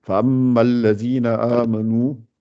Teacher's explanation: mime avec shadda, on colle bien les lèvres, mais avec les bas, on essaye de pas trop, de pas vraiment les coller, enfin, on essaye, parce que je sais que on les rapproche sont très proches, mais sans trop les serrer.